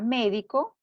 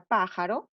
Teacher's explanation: la sílaba tónica va en la antepenúltima sílaba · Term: esdrújulas